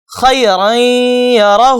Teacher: خیرن یرہ ایسا نہیں پڑھیں گے، نہ خیرن یرہ ایسا پڑھیں گے، بلکہ ناک میں تھوڑی دیر آواز کو روکیں گے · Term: غنہ